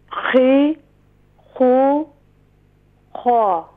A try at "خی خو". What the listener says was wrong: جی اسے اور بھی شارٹ کریں گے۔ جی اگلا حرف پڑھیں۔